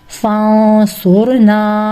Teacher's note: नून साकिन के बाद स्वाद यानी हरूफ इफा है। इसीलिए इस नून साकिन पर इफा किया है।